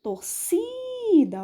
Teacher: ela é paroxítona quando a sílaba tônica sílaba mais forte é a penúltima · o si, que é a penúltima sílaba, ele é a mais forte.